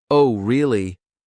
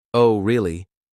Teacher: if it's said with a rising tone it might indicate genuine interest or surprise